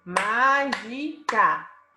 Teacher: A sílaba tônica é má. A antepenúltima sílaba.